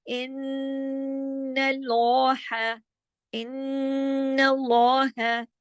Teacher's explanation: तो जब दो नून जमा होंगे तो लाजमी बात है कि गुन्ना होगा बड़ा, गुन्ना होगा लंबा, और इस गुन्ने का नाम है अकमल।